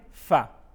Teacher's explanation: اوپر کے دانتوں کے کنارے اور نچلے ہونٹ کے تر حصہ سے ادا ہوتے ہیں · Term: حروف شفویہ